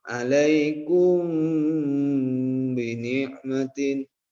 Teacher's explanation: Nah, maka ini didengungkan. Jadi huruf mimnya itu berdengung. Ya, menjadi ikhfa samar juga. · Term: ikhfa syafawi